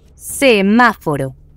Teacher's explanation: Semáforo es una palabra esdrújula porque tiene la sílaba tónica en la antepenúltima posición.